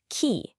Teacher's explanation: The Q in key is the aspirated version. Go on, feel that sharp puff of air.